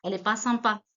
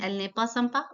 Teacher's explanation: Remember that when we speak fast, we do not pronounce the n or n apostrophe.